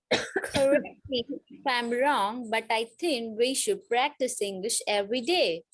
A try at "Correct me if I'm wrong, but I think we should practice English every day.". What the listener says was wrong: See, whenever you break over here, I think, and then break, you will not get the blend. Blend is always continuous. So correct me if I'm wrong. So if I'm wrong is the flow. Correct me if I'm wrong. But I think we should practice English every day. I think we should. is a one phrase together. I think we should practice English every day.